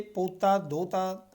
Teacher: ਸ਼ਬਦਾਂ ਦੇ ਮੱਧਵਰਤੀ ਭਾਵ ਵਿਚਕਾਰ ਆ ਜੇ ਜਾਂ ਅੰਤ ਦੇ ਵਿੱਚ ਰਾਰੇ ਨੂੰ ਲੋਪ ਕਰਨ ਦਾ ਰੁਝਾਨ ਹੈ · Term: ਰਾਰਾ ਲੋਪ